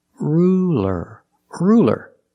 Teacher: is it a dark l or a light l that's right it's a light L because it's between vowels